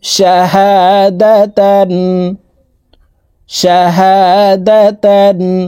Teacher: তানউইনের পরে ইজহারের হরফ আইন আসছে এই কারণে তানউইনওয়ালা তাটি গুন্নাহ সারা স্পষ্ট করিয়া পড়ব